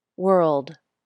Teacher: The back of my tongue drops, and the tongue tip comes up for the D.